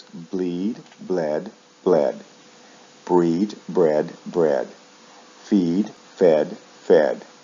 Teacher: Verbs like feed shift vowel sounds in the past participle, usually from long E to short E.